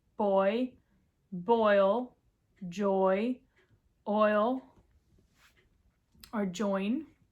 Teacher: Now we have the diphthong with the aw sound and the i sound